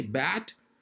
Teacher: when you say bat, your mouth will be open, tongue will be low, hence more oral cavity will be vacant.